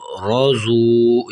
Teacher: آگے را زبر رو، زاد واو پیش زو، روزو۔ یہاں پر را کو بھی موٹا کرنا ہے اور زاد کو بھی موٹا کر کے پڑھنا ہے